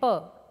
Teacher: bilabial the two articulators involved are upper and the lower lip